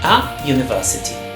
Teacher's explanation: the U here is a vowel, but the sound is a J. So it's a consonant sound.